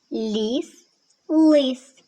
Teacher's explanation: Але в слові лис звук л вимовляється твердо. Він твердий. · В слові ліс звук ль вимовляється м'яко. Він м'який. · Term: твердий приголосний, м'який приголосний